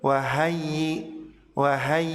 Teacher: Rohmat towua Rohmat dawua ya tasdid yang didahului Fathul Makkah lebih yang berharakat fathah suaranya agak sedikit diangkat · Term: nabr